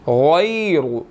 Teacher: غائن کو موٹا ادا کیا جائے گا اور را کو بھی موٹا ہی ادا کیا جائے گا